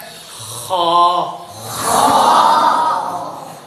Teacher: single موٹا، زبان کی جڑ اوپر اٹھے گی